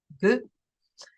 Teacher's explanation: It's felt as if it's articulated very deep in the throat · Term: guttural